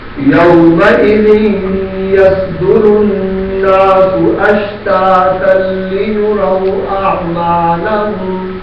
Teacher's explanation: اشتاتن لیروا یہاں تن پر جو تنوین ہے یہ لام کے ساتھ ادغام ہو جائے گا